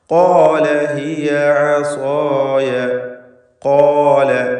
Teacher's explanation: ഈ പദത്തിൽ ഖാഫിന് തഫ്ഖീം കൊടുക്കണം. അതേപോലെ അതിൻ്റെ ദീർഘാക്ഷരമായ അലിഫിലും തഫ്ഖീം ഉണ്ടാവണം. ഖോ എന്ന അലിഫിലും ഇസ്തിഅലാൻ്റെ ഹർഫായ ഖാഫിനെ ദീർഘിപ്പിക്കുകയായതിനാൽ തഫ്ഖീം നിലനിർത്തണം.